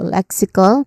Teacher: first syllable is leg. It sounds like neck, but with an L sound at the beginning. And it is a stressed syllable, leg. This is a stressed syllable for the first word, so leg.